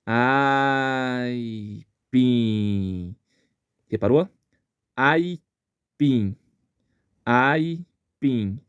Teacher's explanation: São só dois dois ápices sonoros dois ápices de ar que saem da boca